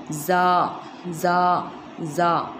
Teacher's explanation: इसका मखरज है ज़बान का किनारा और सनाए सुफला का ऊपरी हिस्सा